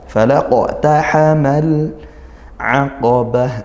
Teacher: al-a ini izhar qamariyah, lam sukun bertemu ain ya